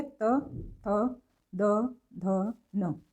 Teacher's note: तो इसके अलावा जो हमारे व्यंजन हैं वो हमारे आ जाएंगे इसमें त वर्ग। अगर आप बोल करके देखें तो जो जीभ है वो दांतों को टच कर रही है, त थ द ध न, तो ये व्यंजन दंत व्यंजन में आ जाएंगे।